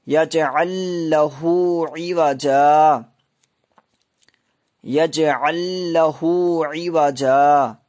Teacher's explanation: یج یہاں قلقلہ ہوگا، کیونکہ جیم کے اوپر جب بھی جزم لگتی ہے تو اس کی آواز ٹکر کھا کر واپس آ جاتی ہے